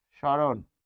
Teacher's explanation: দেখুন মফলা উচ্চারিত হচ্ছে না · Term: অনুচ্চারিত